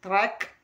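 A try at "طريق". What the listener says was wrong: Non, plus bas. Comme si tu vas dire le A. Non, il faut descendre encore. s'entraîner à dire le K tout seul. Ka, ka, ka, ka, ka, et après, tu l'intègres.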